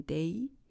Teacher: when you say a as in day, our tongue moves just a bit from the position of a to the position of e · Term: diphthongs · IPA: /eɪ/